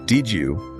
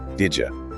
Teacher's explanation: Did you often becomes did ya